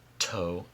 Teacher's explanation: my tongue is on the roof of my mouth, just behind my teeth, but not actually on my teeth